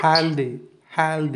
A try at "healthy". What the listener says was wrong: no, that's a voiced TH. Okay, do the S sound. Do that. And then slip your tongue in between your front teeth while doing the S sound still. That sound that you can hear, that's the sound I'm looking for.